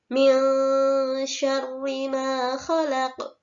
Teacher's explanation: Ma harus dibaca panjang 2 harokat dan dinamakan bacaan mad tabi'i